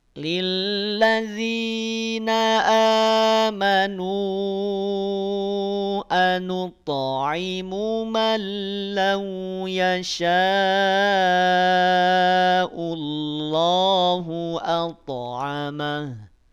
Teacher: Amanu 4 harokat, walaupun boleh 5 harokat.